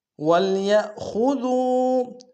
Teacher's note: یا کو حمزہ کے سامنے آئیں گے، جھٹکا دیں گے، خا کو موٹا ادا کریں گے، دال کو واو کے سامنے آئیں گے، واو مد ہے، 1 دار میں کھینچیں گے۔